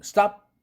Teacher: P 사운드는 보통 입이 개방되지 않고 입을 담은 상태 즉 비개방음 unreleased 비개방음이 되는 거죠. 따라서 이 변이음은 사실상 불파열음 파열이 안 된 그런 의미죠.